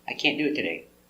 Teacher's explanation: You don't hear any t.